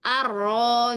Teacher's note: Jadi nunnya hilang nih sama sekali